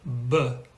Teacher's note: you can feel a vibration. So you can tell that is a voiced consonant. Now the interesting thing is that many sounds, though not all, have a voiced and an unvoiced companion with each other.